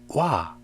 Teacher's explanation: When you say it, your lips are pressed together in a circle and then you open your mouth, which means it's not a single sound. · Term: diphthong